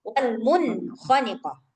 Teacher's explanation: suara nunnya harus jelas karena dia izhar